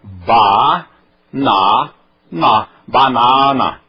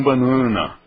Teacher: Cada letra é independente e não nasaliza a anterior.